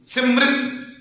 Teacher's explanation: ਜਿਹੜੀ ਸਿਹਾਰੀ ਮੰਮੇ ਨੂੰ ਲੱਗੀ ਹੋਈ ਹੈ ਨਾ, ਉਹ ਤੁਸੀਂ ਰਾਰੇ ਨੂੰ ਉਚਾਰਨ ਕਰਨੀ